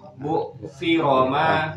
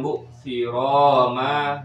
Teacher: Ro-nya pendek. Bu siroma langsung ke ma. Bukan bu siroma.